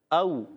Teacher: یہ یاد رکھنا ہے، جس الف پر زبر زیر پیش آ جائے تو وہ حمزہ بن جاتا ہے۔ او، واو ساکن سے پہلے زبر آ رہا ہے، واو لین نرمی سے ادا کریں گے